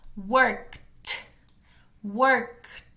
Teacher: Pronuncia la K y seguido de la K, la T. Eso es importante porque no tenemos tantas palabras en español que tengan esas dos consonantes juntas y es lo que puede hacer que suene un poquito distinto a lo que estamos acostumbrados.